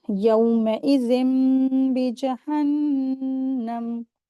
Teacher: تنوین کے جو نون کی آواز ہے وہ میم میں بدلیں گے، اقلاب کا رول اپلائی کریں گے۔